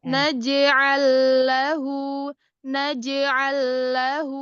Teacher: lam sukun bebaskan dari hidung